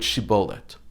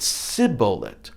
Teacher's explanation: instead of shin they pronounced it sibolet using the sin sound